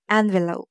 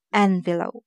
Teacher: When we use it as a noun, it's envelope. The stress will be on the first part, envelope. And when we use it as a verb, it's envelope.